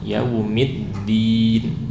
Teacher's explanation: kebanyakan udara, yaumiddin. Nah ya, ini hindari merubah dari ta dan hindari membaca dal dengan hams, baca dal dengan jahor , yaumiddin ya, tahan udaranya. Dan juga jangan jadi apa, dal